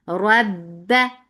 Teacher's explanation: Ra is heavy because there is fatha on it attached with ba. Ba will get sifa of shidda. It means that the makhraj will cut off the sound abruptly.